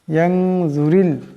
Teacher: এখানে রার নিচে জের আছে, এই রার আওয়াজটাকে পাতলা করিয়া পড়তে হবে।